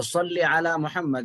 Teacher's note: صلی علی، صلی علی مجہول نہیں پڑھنا چاہیے، اور سین نہیں پڑھنا چاہیے. صاد حروف مستعلیہ میں سے ہے جو پر پڑھا جاتا ہے، موٹا پڑھا جاتا ہے